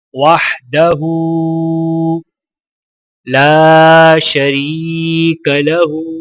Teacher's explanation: وحدہ لا شریک لہ، لام کو الف کے ساتھ ملاتے ہوئے ایک الف کے برابر کھینچ کے پڑھا جائے گا، اور را کو یا ساکنہ کے ساتھ ملاتے ہوئے ایک الف کے برابر کھینچ کر پڑھا جائے گا